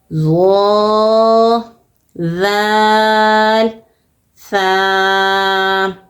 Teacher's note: زبان کی نوک اور اوپر کے دانتوں کے اندرونی کنارے سے تینوں حرف ادا ہوں گے